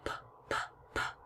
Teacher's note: my lips are making the P sound and there's no sound coming from my throat